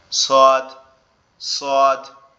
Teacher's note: সদ অক্ষরটা আমাদের জিহ্বার আগা নিচের দাঁতের গোড়ার সঙ্গে লাগবে, লেগে উচ্চারিত হবে সদ সদ।